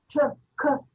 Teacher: Like they are stopped, like it's stopped because the air is stopped when I say the word